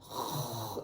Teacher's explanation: ये वाला हिस्सा जो है कौवा सा नहीं हमारी जुबान के मुंह के अंदर जो लटक रहा होता है वहां से मेरी जुबान का पिछला हिस्सा लगेगा